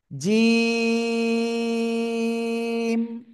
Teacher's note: জিম অক্ষরটা জিব্বার মাঝখান, তারপর আবার উপরে তালুর সাথে লাগিয়ে শক্ত করে উচ্চারণ করতে হবে 3 আলিফটা নিয়ে।